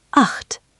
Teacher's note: Imagine you're trying to say h, but with your tongue a little further back in your mouth. Not quite a k.